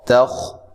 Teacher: خا کو موٹا کرنا ہے، تا کو باریک پڑھنا ہے۔